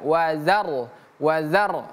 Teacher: rnya sukun maka r-nya juga ikutan tebal